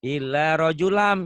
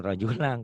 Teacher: Illa rajulam, idgham biguna, jangan rajulang. Kan bukan ikhfa.